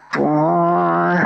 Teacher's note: تواں کے اوپر کھڑی زبر ہے اور ہاں کے اوپر بھی کھڑی زبر ہے. تو ان دونوں کو 1 سیکنڈ لمبا کرنا ہے